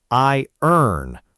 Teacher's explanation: This one looks like it should sound like I ran, but it's actually pronounced I earn, almost dropping that middle sound completely.